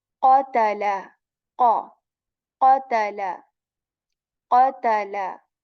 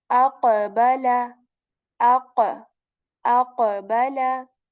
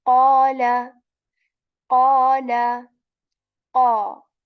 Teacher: The back part of our tongue, it touches the soft palate above it with strength. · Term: qaf